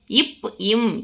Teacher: மேல் இதழும் கீழ் இதழும் பொருந்துவதால் பிறக்கிறது